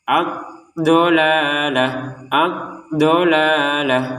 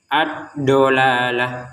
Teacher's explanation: Perhatikan huruf dod jangan sampai sama dengan huruf dal. Dod itu cara pengucapannya sisi kanan lidah atau sisi kiri lidah atau dua-duanya yaitu sisi kanan atau sisi dan sisi kirinya menyentuh gigi atas. · Dot itu cara pengucapannya sisi kanan lidah atau sisi kiri lidah atau dua-duanya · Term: huruf dot